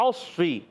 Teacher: عین باریک اور صاد موٹا